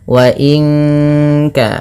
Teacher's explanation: nun mati bertemu kaf suaranya disamarkan ke kaf ya